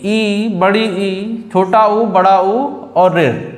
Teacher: इसमें क्या होता है, इन स्वरों में मुख सबसे कम खुलता है। इन स्वरों को उच्चारण करते समय मुंह जो है सबसे कम खुलता है, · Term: संवृत स्वर